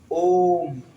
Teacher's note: जब हम बोलेंगे थोड़ा खींच के ओम, तो इसमें 3 मात्रा का समय लगेगा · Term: प्लूत स्वर